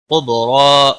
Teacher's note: اور را زبر کی وجہ سے پر پڑا جائے گا، لام کو ہلانا نہیں. قبرا، با ساکن پر کلکلا ہوگا